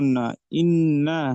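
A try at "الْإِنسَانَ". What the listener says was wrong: না, নুন উপরে জবর নেই তো, সিন আলিফ জবর আছে। আল্লামাল ইন, সিন আলিফ জবর সা। আল্লামাল ইনসা, নুন জবর না, আল্লামাল ইনসানা।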